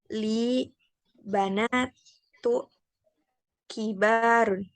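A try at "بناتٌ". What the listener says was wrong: Banatun. Tanwin ya, tanwin. Banatun.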